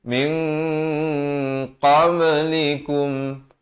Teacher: Minal ladzina khalau, kha di hujung kerongkong, khalau min. Di sini ikhfa hakiki 2 harakat dengan samar dan tebal 2 harakat